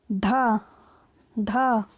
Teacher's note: धा का उच्चारण स्थान है दंत